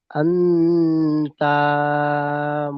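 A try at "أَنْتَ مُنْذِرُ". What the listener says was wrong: তা টান হবে না আমার সোনা ভাই, তা টান হবে না, তা হারাকাত, হারাকাতে টান হয় না। আনতা মুনজিরু। মুন মুন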